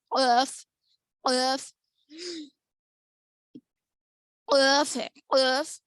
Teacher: زبان کی جڑ اوپر لحات، یعنی اوپر تالو کو لگنے سے ادا ہوتے ہیں